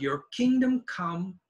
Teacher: Kingdom is a noun it's loud come is a verb it's less loud